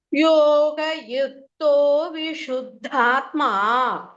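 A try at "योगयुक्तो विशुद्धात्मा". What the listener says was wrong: ஆனா வந்து யோக அது மாதிரி கேக்குறது. யோக யுக்தோ, அந்த கா வர இடத்துல கொஞ்சம் கேர்ஃபுல்லா பாத்துக்கோங்க. கா வராம கா வர மாதிரி.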